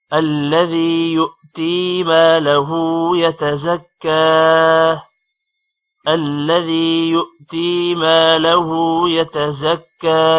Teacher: یؤتی حمزہ آ رہا ہے، یو تھوڑا سا جھٹکا دیں گے